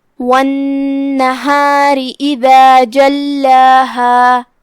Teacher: لام پہ تشدید ہے، تشدید کا دھیان رہے اور جو کہ اس کے بعد مد طبیعی ہے، لہذا 2 حرف کی مقدار میں ہم اپنی آواز لمبی کریں گے